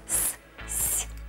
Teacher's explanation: кончик языка у нас упирается в нижние зубы при звуке с боковые края плотно прижаты к боковым зубам зубы сомкнуты губы в улыбки А теперь Попробуйте посвист сами и чувствуйте что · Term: свистящие